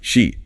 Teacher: The tongue is higher and more forward for e.